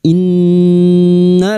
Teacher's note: Nun yang bertasdid gunnah musyaddadah kita dengungkan selama 3 harakat